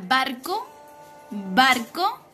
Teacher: En la palabra barco, barco, el acento prosódico se encuentra en la sílaba ba.